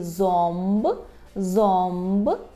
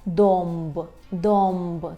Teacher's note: А в позиції перед Б і П у нас є звук ом.